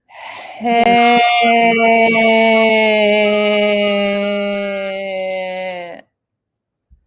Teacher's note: you're saying the word hat, but with a very aspirated H